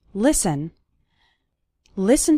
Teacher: the letter T is silent in the word listen